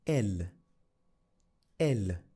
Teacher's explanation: did you notice I didn't pronounce the S at the end of ILS and L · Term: consonant is silent